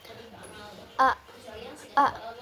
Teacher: huruf hamzah ini ee keluar dari tenggorokan juga. A. Kemudian cara keluarnya itu berupa letupan infari.